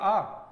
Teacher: जिसका उच्चारण करने में जिसका उच्चारण करने में मेरा पूरा मुख द्वार खुलेगा उसे बोलते हैं विव्रत स्वर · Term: विवृत स्वर